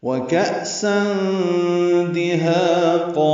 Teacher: واو ہونٹوں کی نا تمام گلائی سے، کا حمزہ ساکن جھٹکے سے ادا ہوگا. سن اخفا کریں گے، تنوین کے بعد دال آیا، دال حروف اخفا میں سے ہے، جلدی اور معروف پڑھیں گے.